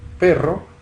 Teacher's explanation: la vibrante, con esas estrías que se dibujan, ¿verdad? Que son los golpes que da la punta de la lengua en los alvéolos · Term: vibrante múltiple